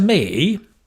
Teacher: that intonation of me means you're going to carry on speaking